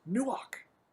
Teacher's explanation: It's a hard CH, almost a K sound, where we almost spit that word out, the k from the back of the throat